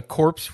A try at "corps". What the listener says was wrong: No, the P is silent.